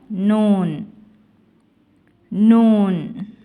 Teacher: லாம். நூன் நுனி நாவின் பின்பகுதி மேல் வரிசை நடுப்பற்களின் ஈரை தொடும்பொழுது லேசாக ஒலிக்கப் பெறுகிறது